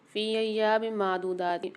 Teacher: ایام میں دو زیر کی تنوین کے بعد میم مشدد آ رہی ہے، غنہ کر کے پڑھیں گے۔ ادغام مال غنہ والا قاعدہ ہوگا یہاں پر۔